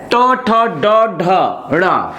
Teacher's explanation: ऐसे वर्ण जिसका उच्चारण करते समय हमारा जीभ ऊपर की ओर मूर्धन्य अवस्था में आता है तो इसे कहा जाता है मूर्धन्य